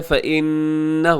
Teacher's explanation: یہاں نون مشدد ہے، فإن، غنہ کیجیے گا، غنہ زمانی